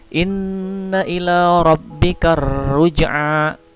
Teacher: alif lamnya tidak dibaca, itu adalah ciri-ciri alif lam syamsiah